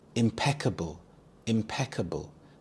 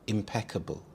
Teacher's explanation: The stress is on the second syllable peek. Impeccable.